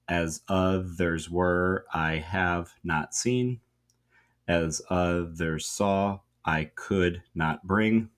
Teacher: the meter is iambic tetrameter, so four iambs